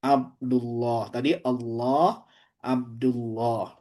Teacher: Dan tebalkanlah suara huruf lam pada lafaz Allah. Bila sebelum lafaz tersebut terdapat huruf yang berharakat fathah atau dammah. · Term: tafkhim lam